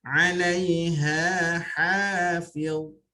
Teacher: 'Alaiha sama-sama rendah, sama-sama istifal nipis. 'Alaiha ha ni lagi nipis ya, ada buhah di situ ya, kepedasan di situ.